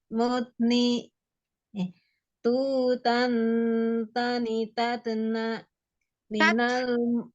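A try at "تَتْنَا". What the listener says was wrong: Jangan tatna ya, hamas aja. Tat nafasnya yang ngalir. Tatna.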